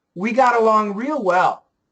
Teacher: Flap T, I want you to flap it there